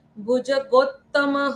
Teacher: गो के बाद डबल त है इसलिए जोर लगाकर पढ़ना है